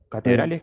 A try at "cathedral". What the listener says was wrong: cathedral. So it's the same, but with th in English. Cathedral.